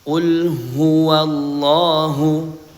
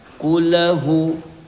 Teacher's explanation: dilanjutkan huruf lam sukun dibaca jelas dan mengalir sedikit karena lam ini memiliki sifat tawasud ya. Mengalirnya sedikit dan tidak memantul.